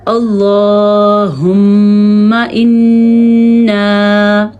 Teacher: میم اور نون کا غنہ ادا کرتے ہیں، تو ہم اور انا، ان دونوں میں ہم نے غنے کو ادا کیا ہے.